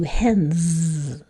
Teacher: the S is sounding like a Z because N is motor on, so that's where that one goes.